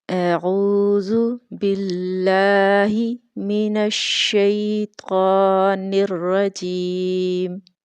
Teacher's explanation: عین کو ٹھیک سے مخرج اس کا ادا نہیں کیا جاتا، جو کہ وسط حلق ہے، اور اگر اس کو حلق کے وسطی حصہ سے ادا نہ کیا جائے تو اس کی آواز اس طرح سے آئے گی اعوذ اعوذ، جو کہ غلط ہے۔